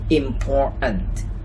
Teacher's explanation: the /t/ sound in the middle could be omitted